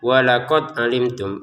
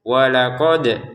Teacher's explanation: ada dal sukun. Ini wajib dipantulkan ya